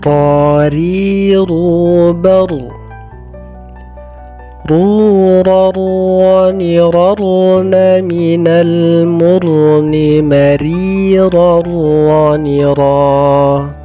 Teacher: Yang membedakan hanyalah bentuk lidah. Ketika mengucapkan ra yang tebal, maka pangkal lidah terangkat ke atas.